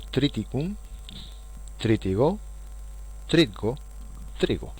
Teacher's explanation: donde podríamos decir que el sonido T desaparece por disimilación